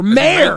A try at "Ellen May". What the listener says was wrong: You have no R in the pronunciation of Ellen May.